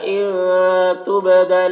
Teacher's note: इनके नून में इख्फ़ा हो रहा, नून की आवाज़ को नाक में छुपा कर पढ़ेंगे।